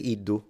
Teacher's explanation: I wouldn't do the J pronunciation of the D but some people do so it's not incorrect